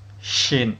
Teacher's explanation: Makhraj huruf shin, tengah lidah mengenai langit-langit rongga mulut.